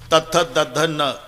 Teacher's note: जेव्हा संबंध दाताशी येतो ते दंते आहे. तथ दध न, किती ताकद लावून धक्का मारते जीभ आतून दाताला. त थ द ध न, पूर्ण लाईन ही दंते आहे.